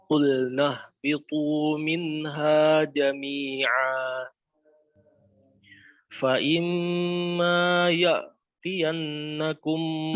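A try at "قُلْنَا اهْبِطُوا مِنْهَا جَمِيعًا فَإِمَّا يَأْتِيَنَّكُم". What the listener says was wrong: ya'ti huruf hamzah ya. Hamzah tahqiqnya harus jelas ya karena hamzah punya sifat syiddah. Qulna bitu minha jami'a fa imma ya'ti. Ya'ti.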